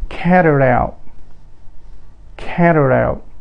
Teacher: ينقلب صوت حرف التي إلى ر خفيفة، فيصير كاري.